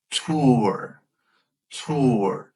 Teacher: You're going to round your lips to get that oo sound.